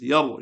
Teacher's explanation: After fatha dhamma comes ra sakin. Read with the full mouth.